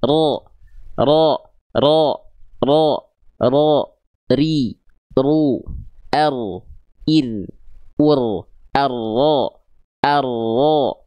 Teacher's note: Nah, yang nempelnya itu bagian punggung lidahnya. Nah, sedikit celah di ujung lidah ini yang dia nggak nempel, itu untuk sifat tawasud dari huruf ro, yaitu mengalir sedikit suara ketika melafalkan huruf ro. Nggak terputus ketika makhrajnya nempel.